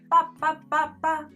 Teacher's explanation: almost the same as the mm sound except you open your lips after you close them